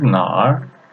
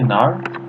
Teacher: Just the tone change. This is third tone, this is fourth tone, and the meaning is changed.